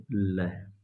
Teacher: हवा दोनों किनारों से बाहर निकल जाती है। पार्षित व्यंजन कहलाता है। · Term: पार्श्विक व्यंजन